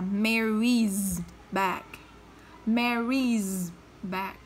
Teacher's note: Nó kết thúc bằng âm y tức là nó kết thúc bằng nguyên âm, vậy nó cũng phải đọc là z. Vậy cái này cô sẽ đọc là Mary's back.